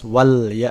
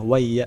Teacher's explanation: Karena ada alif lam bertemu ya, maka la-nya dibaca jelas wal ya, tidak dimasukkan ke huruf selanjutnya wai ya, enggak. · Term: alif lam qamariyah